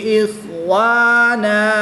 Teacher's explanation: دو زبر کی تنوین کو وقف میں الف مدہ سے تبدیل کر کے پڑھیں گے۔